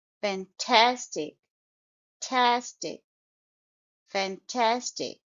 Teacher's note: I have underlined all the syllables and the stress is on the second syllable fantastic tastic fantastic so you will stress Tas second syllable